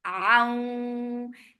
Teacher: This is idgham with kunna. So keep the sound in your nose for a longer time